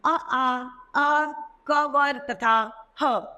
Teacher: कंठ श्रेणी पहले कंठ है, स्थान है कंठ मतलब गला और जीभ के नीचे के भाग।